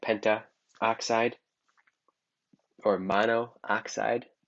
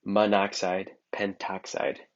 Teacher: the first vowel is dropped just for pronouncing